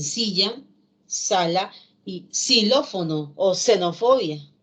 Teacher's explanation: El fonema fricativo alveolar sordo, más conocido como S, se representa con letra S y también con X.